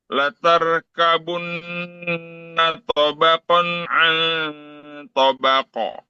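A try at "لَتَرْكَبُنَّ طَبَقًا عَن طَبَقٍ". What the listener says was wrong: Oke, tebalkan lagi ro. Ro. Ya, ang itu ada ikhfa tebal. Ang menjadi ang, ong, ong.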